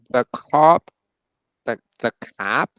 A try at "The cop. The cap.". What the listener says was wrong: Cop. That was too American. Cap. The cap. The cop.